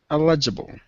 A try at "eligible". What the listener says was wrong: Eligible. Close. We emphasize the first syllable. Eligible. It sounds like you're saying illegible, which is unreadable. So we want to say eligible.